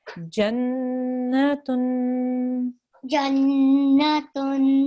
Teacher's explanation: make sure again with your tanveen that you hold that light nasal sound for 2 seconds